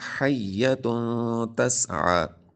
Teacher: تنوین کے بعد تا حروف اخفا میں سے، تو یہاں پر اخفا کا غنہ کریں گے